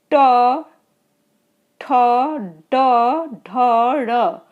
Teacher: देखिए ए मूर्धन्य मतलब बीच तालु में जाके, मूर्धन्य एकदम बीच तालु में जाके जिह्वा स्पर्श कर रही है। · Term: मूर्धन्य व्यंजन